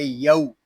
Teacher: یہاں واو لین ہو رہا ہے، اس کو کھینچ کر نہیں پڑھیں گے